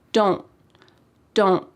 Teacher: We call this a stopped T because your mouth is making that shape, don't. My tongue is at the top of my mouth trying to make that T shape, but there's no puff of air that comes out.